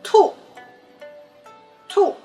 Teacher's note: the tone goes down, it's the fourth tone